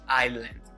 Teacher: I'm finishing with the sound N and D, so you pronounce it as island with the S totally silent.